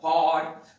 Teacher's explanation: HOARD की बात करते हैं, हॉर्ड, हॉर्ड ना, हमारा ब्रिटिश प्रोनाउंसिएशन है, इसमें आर का उच्चारण नहीं होता